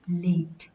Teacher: voiced alveolar lateral sound the initial sound of light